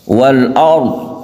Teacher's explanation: roknya dibaca tebal, kemudian dotnya tidak perlu kita kolkolahkan karena dot itu bukan huruf kolkolah